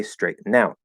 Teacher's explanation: you can actually say straighten out and connect the n